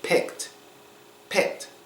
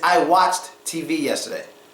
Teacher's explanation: the D sound is pronounced as a t sound when it's last letter in the word but it follows an unvoiced consonant sound